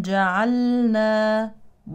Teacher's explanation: لام فعل مظهره نحذر من ادغامها في النون